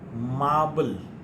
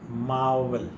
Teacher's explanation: b is a bilabial and v is labiodental